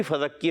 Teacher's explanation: را ساکن سے پہلے زیر آ رہی ہے، را کو باریک رکھیں گے · کاف مشدد ہے، ذرا رک کر ادا کریں گے